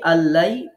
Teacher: ডান দিক থেকে প্রথম নুন সাকিনের পর লাম থাকায় আমরা যখন পড়ছি আল্লাই তখন আমরা লামে গুন্না করছি না